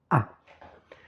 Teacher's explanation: la distance entre la langue et le palais est maximale